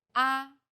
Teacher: the first tone is steady with a high pitch · The fourth tone falls sharply and quickly from a high pitch.